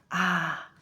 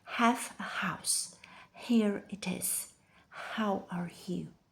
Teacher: This is what happens when you drop the H. The H requires your vocal cords to narrow the space, creating that breathy friction. Without it, the sound just disappears.